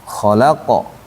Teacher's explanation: qafnya itu huruf tebal, bukan huruf tipis dia. Sehingga mantulnya mendekati harokat fathah. Fathahnya qa itu ya qa bunyinya. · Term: huruf qalqalah